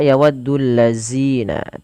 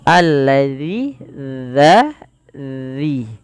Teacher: tapi dia dza, ujung lidah kita menempel dengan gigi seri atasnya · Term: huruf dzal